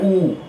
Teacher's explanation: ऊ बोलने में आपके होंठ गोल हो रहे होंगे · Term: ओष्ठ